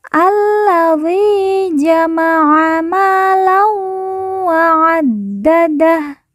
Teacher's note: Zi kita baca panjang 2 harokat karena di depannya terdapat huruf ya sukun atau ya mati.